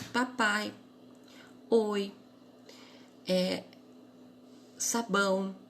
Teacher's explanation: Então, você vê que papai, o ai não se separa, ele vai estar junto no pai. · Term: ditongo